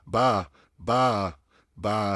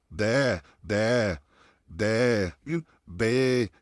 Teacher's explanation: जुबान चपटी है, लिप्स दोनों खुले हैं, नॉर्मल ओपन है। और उससे हम निकालेंगे आ का साउंड, अलिफ मत का साउंड, बा बा बा।